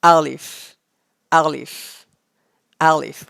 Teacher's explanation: comes from the empty space of your mouth